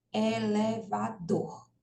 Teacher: essa última sílaba aí o dor é pronunciado com mais força do que as outras elevador Ok então o dor é a sílaba tônica da palavra